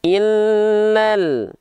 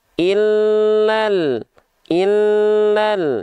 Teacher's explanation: Nggak dibaca. Dari illa 1 harokat langsung masuk ke huruf lam berikutnya.